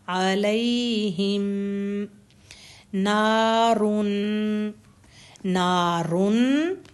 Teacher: نون کی حرکت یہاں ہم 2 کریں گے کیونکہ نون کو زبر کے ساتھ الف ہے ، جب بھی زبر کے ساتھ الف آئے گا یا کھڑا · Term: حرکت ہوگی 2